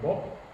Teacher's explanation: So it's just as in English, when you write the word bob, the first B sounds like a B, but the last B sounds like a P